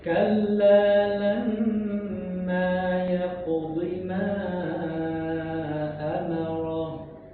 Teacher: perhatikan mim bertasydid harus ditempo